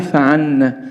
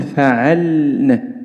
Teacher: لابد من مراعاة عدم انحراف اللام إلى صوت النون فلا نقول فعلنا إنما نقول فعلنا.